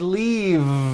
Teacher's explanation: It's not leaf with an unvoiced F. I should have said leave with a voiced V sound.